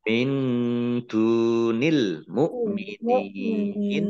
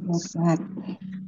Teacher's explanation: Nun sukun bertemu dengan huruf dal, bacaan ikhfa, dibaca samar-samar. Dal domah wawu sukun mat tabi'i panjang 2 harokat.